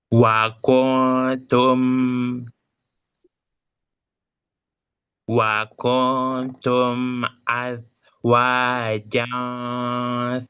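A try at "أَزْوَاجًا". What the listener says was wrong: Zainya bukan bukan bukan bukan bukannya zal. Bukannya zal tapi zai.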